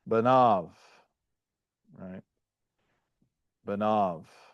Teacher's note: The resultant sound is simply that of a long A followed by a V